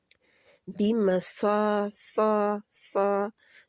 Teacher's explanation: زبان کی جڑ کو پیچھے سے اوپر اٹھائیں گے تو صاد موٹا ہو جائے گا